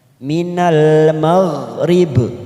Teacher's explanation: Karena kita wakaf di sini dan terdapat huruf ba, maka kita berhenti dengan cara memantulkan huruf ba.